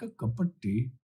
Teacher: the t is almost like a d it's not exactly a d but it's almost like a d